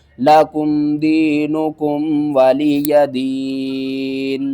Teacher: وقف کی صورت میں نون کے نیچے جو زیر ہے اس کو آپ نے ختم کر دینا ہے ، یہاں پر وقف ہو جائے گا، لَکُمْ دِینُکُمْ وَلِیَ دِین۔